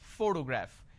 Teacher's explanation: the correct pronunciation is photograph which means I'm stressing on this particular syllable which is the first syllable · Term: word stress